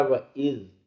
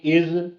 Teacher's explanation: Number 2، اس میں جو مخارج ہیں وہ آئے ہیں عذابی، عین کی ہم کوشش کر رہے ہیں کہ عذابی عین حلق سے نکلے، اور زال کا مخرج جو ہے وہ نرم ہے زا کے مقابلے میں، اس لیے ہم نے پڑھا وَإِذْ نرم سے، تَأَذَّنَ، اگر اس کو زور دے کے پڑھ لیں گے از یا تَأَذَّنَ تو یہ زا پڑھی جائے گی اور معنی بدلے گا، جب لفظ بدل گیا معنی بدل گیا۔